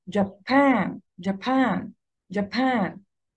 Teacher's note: الستريس في Japan على المقطع الثاني